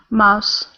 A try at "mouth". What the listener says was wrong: So try less saying an S sound, because it sounds like you're saying mouths. Try this th.